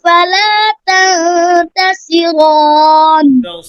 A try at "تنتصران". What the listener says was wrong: صاد মোটা করে تنتصران